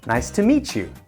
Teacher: For example, falling intonation might be better in a business environment when you would say, nice to meet you. However, if you're meeting a friend of a friend, a rising intonation would be much friendlier.